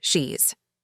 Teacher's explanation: I had a strong Brazilian accent. Like saying cheese with a sh sound